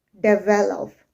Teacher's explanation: I'm not saying develop, I'm saying develop. Okay, and I am putting more stress on the second syllable, develop.